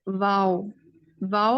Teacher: واؤ میں آپ دیکھیں کہ زبان کی پوزیشن اوپر کی طرف کو ٹینڈ ہو رہی ہے